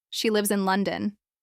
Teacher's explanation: Your pitch begins higher and naturally falls on the word London. It sounds final like you're done sharing that piece of information. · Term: falling intonation